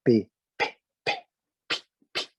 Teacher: Vocês notam que as cordas vocais são muito pouco acionadas.